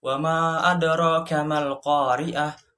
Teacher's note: Cara membacanya panjang seperti mad tabi'i, 2 harokat atau 4 harokat. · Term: mad jaiz